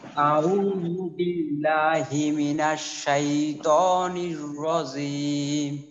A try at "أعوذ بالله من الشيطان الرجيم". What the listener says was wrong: رجيم বলা হয়েছে, রজিম, জিম শক্ত, ভাইব্রেশন কম্পন হবে, রজিম।